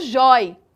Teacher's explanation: Percebam que a sílaba tônica, ela é a penúltima sílaba, é o jói. Isso quer dizer que esse acento caiu de acordo com o novo acordo ortográfico de 2009, ok?